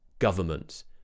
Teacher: you might hear a lot of native speakers just say government where they actually remove the n in the middle